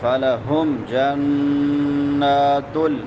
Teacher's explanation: جنات غنہ نون مشدد ہے